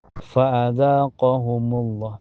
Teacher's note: di lafaz Allah dibaca tebal ya, tafhim karena sebelumnya berharokat dhammah